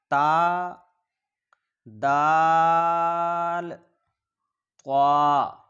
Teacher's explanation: حروف نطعیہ 3 ہیں: تا، دال، طا۔ زبان کی نوک اور اوپر کے دانتوں کی جڑ سے ادا ہوتے ہیں